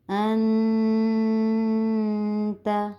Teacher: نون ساکن کے بعد تا آیا جو کہ حرف حلقی میں سے نہیں ہے، اس وجہ سے ہم نون پر غنہ کریں گے